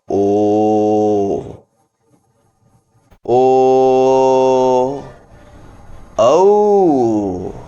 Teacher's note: ಯಾವುವು ಇದು ಬಹಳ ಇಂಪಾರ್ಟೆಂಟ್ ನೋಡ್ರಿ ಕಂಠದಿಂದ ಹುಟ್ಟುದು ಓ ಓ ಔ ನೋಡ್ರಿ ಓ ಅನ್ನೋದು ಹುಟ್ಟುವುದು ಕಂಠದಿಂದ ಬಳಕೆ ಮಾಡುವುದು ಮುಂದೆ ತುಟಿಯನ್ನ ಬಳಕೆ ಮಾಡಿಕೊಳ್ಳುತ್ತದೆ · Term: ಕಂಟೋಷ್ಟ್ಠ